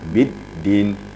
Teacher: Berbeda dengan dal. Dal bertasydid itu sifatnya syiddah, terputus.